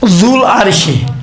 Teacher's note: یہ واو جب آپ ملا کر پڑھیں گے نا یہ واو تلفظ نہیں ہوگا